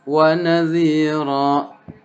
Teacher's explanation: Nah, itu ra alif fathah tain ra atau di ujung ayat, maka itu dibaca mad iwad namanya. Hanya 2 harokat atau 1 alif. Tidak boleh lebih. Ya. Jadi walaupun kita lagunya mungkin lagu tertentu, tetap harus 2.